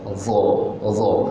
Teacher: Dia ada bunyi, bunyi safir. Za ni makhrajnya sama macam zai ataupun zal, sama macam zal. Di antara dua gigi, antara dua gigi, tetapi bunyinya ditebalkan. · Lidah tu sempit sikit antara dua dua gigi. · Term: huruf dha